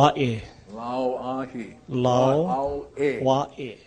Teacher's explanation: See, the A in this last word is kind of pronounced Wa'e. This is the Okina, or the glottal sound. That's the punching sound.